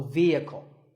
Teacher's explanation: It's often pronounced wrongly as vehicle, but the E is a long vowel and the H is silent, so vehicle.